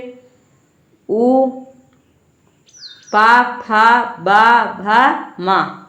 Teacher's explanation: ओष्ठ से उ पा फा बा भा मा, इसका उच्चारण होता है